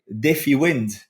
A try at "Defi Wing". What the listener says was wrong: Yeah, Defi Wing with with a G at the end, not a D.